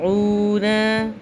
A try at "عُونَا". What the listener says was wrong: پیش کے ساتھ واو آئے گی، لمبی ہوگی تھوڑی سی.